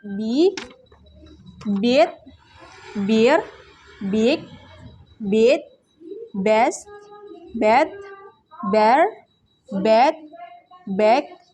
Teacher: voice bilabial stop sound ba